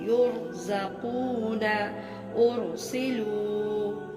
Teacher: را ساکن سے پہلے زبر یا پیش ہو، اس صورت میں بھی را موٹی ہی پڑی جائے گی